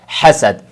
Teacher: آگے جو حا ہے دونوں لفظوں کے اندر، ایک حاسدن اور دوسرا حسد، اس کے اندر پہلا والا جو حا، اس کو بھی صحیح پڑھے حا، اور دوسرے والا جو حا ہے حسد، اس میں بھی حا کو دھیان سے پڑھے، حا کی آواز آئے، اس حا کو نہ خو بنائیں اور نہ ہا بنائیں